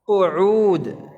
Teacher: Wawunya tidak ada gunnahnya, ain juga tidak ada gunnahnya.